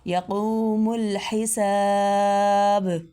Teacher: با پہ کلکلہ یعنی با کو تھوڑا ہلا کے ادا کرنا